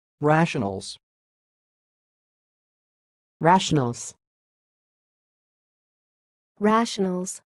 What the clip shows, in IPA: ˈræʃənəlz